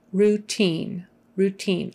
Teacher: i and e is pronounced with a long e sound